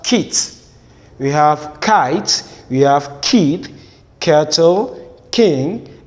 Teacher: Okay, the next plosive sound is the one represented with letter K, but it is to be pronounced as k, and this has its description as the voiceless velar plosive. That is, the sound is to be produced at the velum and it is voiceless